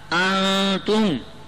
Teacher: اب نون ساکن کے بعد تا انتم, یہ نون ساکن میں اخفاء حقیقی کا غنہ ہوگا